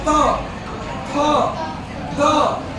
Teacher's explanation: थ हमेशा ऊपर वाला दांत जो चार ऊपर है ना, उस पर जाकर के मार रहा है, फिर आवाज निकलती जाती है।